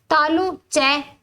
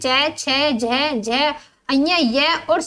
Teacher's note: इनके उच्चारण में जीवा मुख के ऊपरी चिकने भाग तालुका स्पर्श करती है। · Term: तालव्य